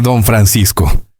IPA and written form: doɱ fɾanˈsisko (Don Francisco)